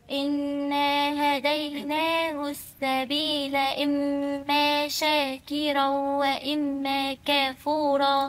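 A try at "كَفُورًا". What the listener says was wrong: مش كاف، أنت عمالة تزودي ألفات النهاردة.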